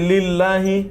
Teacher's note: হামজা ওয়াসল মানে যেটা দুর্বল হামজা, সেই হামজা ওয়াসলটা পড়ে যায়